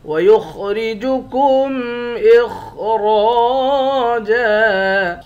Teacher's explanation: خا کو موٹا پڑھیں گے اور اس خا کو بھی موٹا پڑھیں گے، را کو بھی موٹا پڑھیں گے۔ را کے بعد الف ہے، الف حروف مدہ ہے، ایک الف کے مقدار کھینچ کر پڑھتے ہیں۔